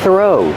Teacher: The th makes a voiceless sound. Just air.